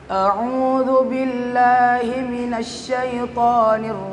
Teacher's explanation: yang saya baca di situ ada huruf mim cara membacanya itu ketika kita waqaf di huruf mim maka diberikan aliran suara sedikit